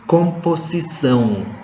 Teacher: Harus ada bunyi NG di belakang, bunyi nasal.